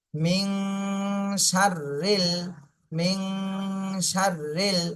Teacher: নুন সাকিনের পরে ইকফার হরফ আসছে এজন্য এই নুন সাকিনে ইকফা গুন্না করতে হবে